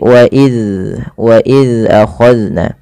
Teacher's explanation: Zal yaitu ujung lidahnya menempel dengan gigi seri atas. Maka dan huruf zal tidak boleh terpantulkan, tidak boleh wa iz ya.